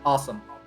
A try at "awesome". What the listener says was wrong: You need to really emphasize the aw sound at the beginning of the word for a New York accent.